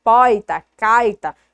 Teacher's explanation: Então, às vezes eu estou numa região, determinada coisa eu conheço de uma forma, às vezes a palavra ela é falada de outra forma, tem estado que a gente escuta aquele R muito retroflexo, muito forte